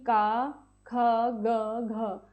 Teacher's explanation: तो आपके जो है कंठ्य वर्ण में वो होते हैं जिनका उच्चारण कंठ यानी कि आपके गले से होता है। इन वर्णों में वायु कंठ में रुकती है और फिर बाहर निकलती है। · ये जो आपके वर्ण है इसके उच्चारण में हम कहते हैं हमारे गले के भीतर, गले के पास से जो है वहाँ से ध्वनि आ रही है